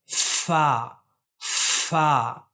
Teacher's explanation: اوپر کے جو دانت ہے اس کو نیچے کے ہونٹ سے ملا کر ہوا کی پریشر سے ہم لوگ ادا کرتے ہیں